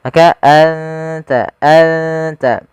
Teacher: makhraj daripada huruf ta sendiri makhrajnya adalah ujung lidah kita ujung lidah menempel dengan gusi atas kita